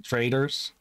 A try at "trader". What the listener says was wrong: The way you pronounce trader, it's almost sometimes you say, about to say traitor.